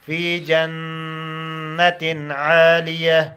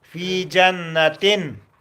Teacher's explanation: في جنة عالية جنہ میں نون مشدد ہے، اس میں غنہ کرو